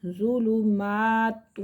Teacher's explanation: میم کھڑا زبر ما ہے، اسے ایک الف کی مقدار کھینچیں گے